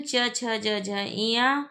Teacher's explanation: उच्चारण स्थान के आधार पर इया व्यंजन है तालव्य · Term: तालव्य व्यंजन